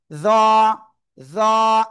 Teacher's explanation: জিহ্বার আগা উপরে 2 দাঁতের আগায় লাগিয়ে মোটা মোটা আওয়াজে হবে।